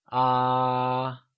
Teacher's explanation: it is said as if you were singing a high note, like ah. · The high tone, or the first tone, is denoted by a high bar over the vowel, and it is said as if you were singing a high note